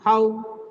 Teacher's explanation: Now, at the end, it goes down. Please, It starts with higher note, it ends with lower note. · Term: falling tone